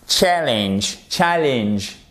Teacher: le E, faut se méfier, c'est pas un E, c'est un I court en anglais. Et vous savez que le I court en anglais, il se rapproche un peu du E accent aigu. · le A court, il se rapproche un peu du E · OK? Donc déjà, vous avez l'accentuation ici, c'est la première syllabe. Ça se prononce ce A comme un A court.